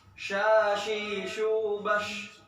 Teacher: Tafashi artinya menyebar. Tersebarnya udara dalam mulut. Yaitu ketika huruf shin.